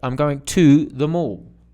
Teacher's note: Now it's not ter. It's not the reduced ter. It's to. So it's in the strong form.